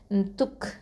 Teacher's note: அடுத்ததாக பாருங்கள், த தொமா கேஃப் சுகுன் துக். துக், இந்த கேஃப் சுக்குனுக்கு வந்து நம்ம ஹம்ஸ் கொடுக்கணும்